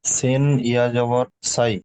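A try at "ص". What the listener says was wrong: সিন নয়, এটা শিন, মোটা করে একটু, তালবেশ দিয়ে। আর একটু মোটা, শিন, মোটা করে একটু,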